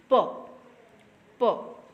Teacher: For example, when you will pronounce the sound of p, just you put your finger on your throat and you can see or you can examine that while pronouncing the p sound your throat does not vibrate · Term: voiceless sound